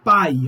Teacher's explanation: Uma vogal, o A, e uma semivogal, o I. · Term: Ditongo